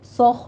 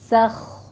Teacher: سین کو باریک رکھنا ہے، خا کو پر کرنا ہے ، ٹھیک ہے، دھیان رکھیے گا، سوخ نہیں کہنا، سخ۔ من